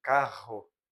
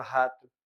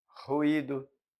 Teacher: Quando a ponta da língua vibra ao contato com os alvéolos, produzindo uma série de oclusões muito breves da corrente de ar. O R e o RR, então, por exemplo, carro, vibrante, não é isso? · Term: vibrantes